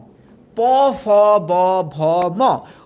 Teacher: উচ্চারণ করার টাইমে lips, two lips, upper lips, lower lips comes together and hit each other and a sound release that is called ওষ্ঠ ব্যঞ্জন।